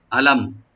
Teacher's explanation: আলাম, হামজাকে রাইট দিবেন গলা শেষ থেকে, লামটাকে ওপেন করে পড়বেন, মিমে এখানে কোনো গুণা হবে না, জাহার সফবি